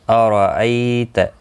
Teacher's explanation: ای یا لین ہے، تھوڑا نرمی کے ساتھ آدھے الف کی مقدار کے برابر کھینچ کر پڑھیں گے